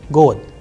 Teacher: Here the word is ending with de, god, but if you are pronouncing and pay attention minutely, then you would hear the sound of te, not de. So, it is changing into te. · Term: voicing and devoicing